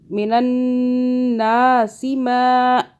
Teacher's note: یہ والا نون مشدد ہے، گنہ کیا 2 سیکنڈ کے لیے · سین کو نہیں کھینچنا، او کو بھی نہیں کھینچنا